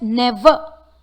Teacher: Though the word ends with the letter R, the last R is pronounced as A in British English.